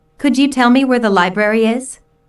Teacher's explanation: notice that library is stressed